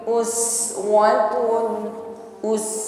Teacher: huruf Sin sukun selain Hames ada nafas yang mengalir